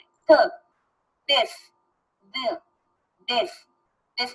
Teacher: जैसे द sound, द में देखें आपकी टीथ और टंग आपस में टकराते हैं। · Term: डेंटल